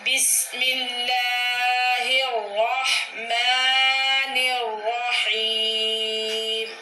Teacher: جی بیٹا، اس میں جلالت اللہ سے پہلے زبر یا پیش ہو تو اس میں جلالت اللہ کا لام پر پڑا جائے گا، لیکن یہاں پہ اس میں جلالت اللہ سے پہلے زیر ہے تو یہاں پہ لام باریک پڑا جائے گا، اور دونوں جگہ غا پہ الرحمن اور الرحیم میں غا پہ زبر ہے، را کو پر پڑیں گے، اور آخر پہ یا مدہ ہے حیم تو ہا کو کھینچ کے پڑھیں گے.